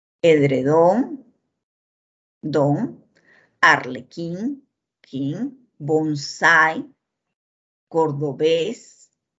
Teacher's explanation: lleva la mayor fuerza de voz el acento en la última sílaba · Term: palabras agudas